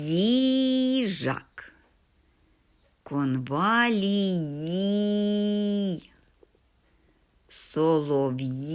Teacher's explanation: у кожному слові назві малюнка живе звукосполучення йі